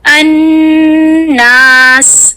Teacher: उसके बाद मैं अलिफ की आवाज को 2 काउंट्स लंबा खींचूंगी। अन्नास, ये जो अलिफ की आवाज को मैं 2 काउंट्स लंबा खींच रही हूँ ये है मद आरिद लिस्सुकून की वजह से।